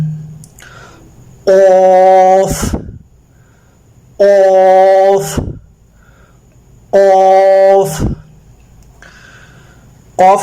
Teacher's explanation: 4 الف کے برابر کھینچنا ہے · پہلا حرف ہے قوف، موٹا ادا ہوگا، حروف مستعلیہ میں سے